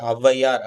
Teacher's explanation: இதுவும் சொல்லின் முதல்ல வர்றப்ப 2 மாத்திரையிலிருந்து 1 மாத்திரை அளவு குறைந்து ஒலிக்கும். இப்ப ஔவையார் அப்படின்ற வார்த்தையில வந்து 2 மாத்திரையிலிருந்து 1 மாத்திரை அளவு குறைந்து ஒலிக்கும். வந்து இடையிலும், இறுதியிலும் வரவே வராது. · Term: ஔகார குறுக்கம்